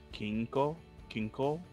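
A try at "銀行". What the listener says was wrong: Yeah, but chase the key, change the key to a gi. Ginko.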